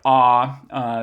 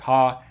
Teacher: a low bow like ah so in a word like ha we lower the sort of highest arch of the tongue to being next to our pharynx rather than to our palate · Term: low back vowel